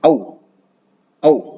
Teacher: Nah, nanti ketika kita menemukan ada dua vokal A dan U dempet atau bersandingan, maka dua vokal itu harus dibaca seperti satu vokal. Jadi bukan berarti menghilangkan bunyi salah satunya, tapi dipercepat. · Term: diftong